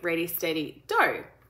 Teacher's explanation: they're still saying the d sound instead of the g sound at the back